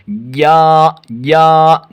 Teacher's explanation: زبان کا بیچ اور اس کے مقابل اوپر کا تالو